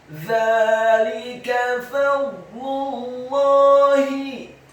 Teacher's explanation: Dzalika, huruf za-nya dibaca tipis, tarqiq, lidahnya agak keluar sedikit, fathah dua harokat karena harokatnya tegak. Kemudian huruf lamnya dibaca tipis, kasrah satu harokat, huruf kafnya dibaca tipis, fathah satu harokat